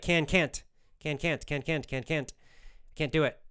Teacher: It's almost like just an extra pause. Sometimes you don't even hear the T sound so much. It's just like a little extra pause of air at the end that tells you it's negative.